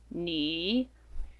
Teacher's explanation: Notice it's said with a falling and rising third tone